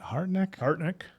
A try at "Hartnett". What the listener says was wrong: No, there's I don't think there's a K in there.